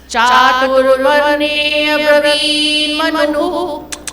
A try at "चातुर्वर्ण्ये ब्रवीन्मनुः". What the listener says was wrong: चातुर्वर्ण्ये ब्रवीन्मनुः। You are not stressing bra. Ba plus ra. Bra.